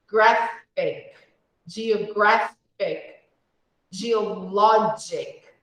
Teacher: So the stress falls on the penultimate syllable.